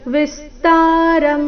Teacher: ಏವಚ ವಿಸ್ತಾರಂ ವಿ ಮೇಲೆ ಆಘಾತ